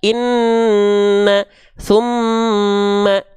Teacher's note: Summa, tahan dulu ya, guna dengungkan 2 harokat.